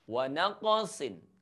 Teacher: ada huruf qaf yang harus kita pantulkan sebab qalqalah. Kemudian ada tanwin menghadapi huruf mim.